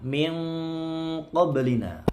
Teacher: nun sukun ketemu qaf, ikhfa hakiki, disamarkan, didengungkan juga sekitar sampai 3 harokat.